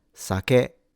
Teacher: Note that the pitch is low to high, sake, and each syllable has the same length. Sa, ke. It is not pronounced sake, and it's not pronounced saki.